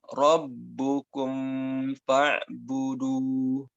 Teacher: Ini ada beberapa pembaca Al-Quran itu mimnya tidak disempurnakan dan tergesa-gesa mengucapkan fa sehingga timbul pembacaan ikhfa.